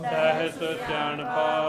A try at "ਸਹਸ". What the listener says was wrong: ਜੇ ਸਹਸ ਕਵਾਂਗੇ ਤੇ ਸਸੇ ਨੂੰ ਦੁਲਾਈਆਂ ਲੱਗਦੀਆਂ ਦੁਲਾਈਆਂ ਨਹੀਂ ਲਾਉਣੀਆ